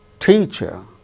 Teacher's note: out of these two syllables the first syllable is stressed that gains importance more importance than the other syllable that's why